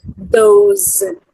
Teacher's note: the word those begins and ends with voice fricative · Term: voiced fricative